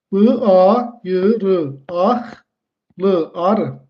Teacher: Sözün sonundakı q-dan sonra samit gələndə dedik necə olur? Q hərfi X kimi tələffüz edilir.